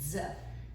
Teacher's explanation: Z is the voiced equivalent. Your vocal cords are vibrating when you say it. So if you actually place your fingers around your throat, you'll hear the vibration z.